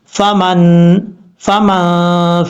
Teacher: حروف اخفا میں سے، نون ساکن کے بعد آ رہا ہے، یہاں پہ اخفا ہوگا نون ساکن کا، ایک الف کی مقدار غنہ کر کے پڑھیں گے